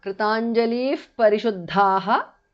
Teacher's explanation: Anuswara changes to nga there. Visarga changes to upadhamaniya.